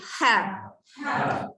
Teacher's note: angin keluar dulu baru ada bunyi. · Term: huruf ha